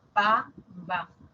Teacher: Bilabiales que se han articulado con los dos labios